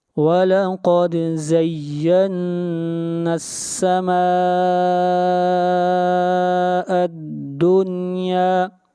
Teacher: اور نون کو ملائیں گے سین کے ساتھ، زَيَّنَّا السَّمَاءَ الدُّنْيَا، سما یہاں پر مد متصل ہے، اس مد کو 3 الف کے برابر کھینچ کر پڑھیں گے